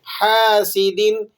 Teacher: یہ حلق والا ہا ہے، حلق کے بیچوں بیچ سے ادا ہوتا ہے، آپ نے اس کو حلق ہی سے ادا کرنا ہے۔